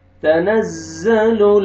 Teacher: تنزل، زا کو آپ نے موٹا کر کے پڑھنا ہے